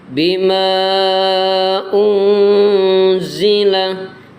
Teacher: Ikhfa itu artinya samar. Samar, ada dengungnya tapi samar, itu namanya ikhfa.